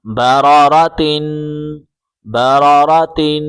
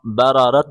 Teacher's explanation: ہے ہا میں کنورٹ ہو جائے گا، ہا پڑھا جائے گا، تا بالکل نہیں پڑھا جائے گا